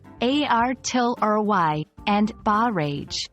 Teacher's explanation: the first part artillery has the stress on the second syllable and in barrage the stress is on the second syllable as well